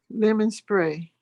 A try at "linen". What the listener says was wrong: Linen, like a pillow and Yeah, linen, not lemon, linen.